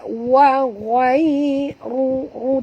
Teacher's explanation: Walaupun ya tu lin tapi huruf ghai ni tetap tebal. Wa ghai ru tebal ya, huruf ra tafkhim baris depan.